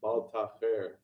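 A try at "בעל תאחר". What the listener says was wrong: I think you're saying Bet Lamed, which is with a ayin.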